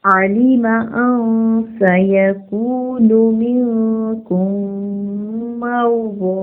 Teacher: आइन को वाज़े करके अदा करेंगे, हरकत को लंबा नहीं करेंगे. लाम और मीम दोनों की हरकत को खींचेंगे नहीं.